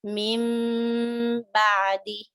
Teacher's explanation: What happens here is you would see a small meme on top of the noon, indicating that you're not pronouncing noon, you're rather pronouncing the meme because there is a ba following noon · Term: iqlab